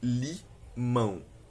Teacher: Primeiro, a palavra limão, que se divide em duas sílabas, limão, em que podemos verificar um ditongo na segunda sílaba, formado pelas vogais A e O